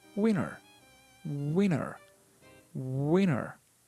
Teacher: Maybe to avoid confusion with the word winner, there is a little sound of D. D.